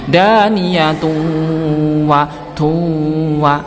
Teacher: dhammatainnya dimasukkan ke huruf wawu ya, dengan disertai dengung. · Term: idgham bi gunnah